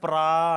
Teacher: ఇక్కడ మనం దీర్ఘం తీసుకోవాలి. దీర్ఘం తీసుకుంటే 2 సెకండ్లు ప్రా కాబట్టి ఇది గురువు అయిపోద్ది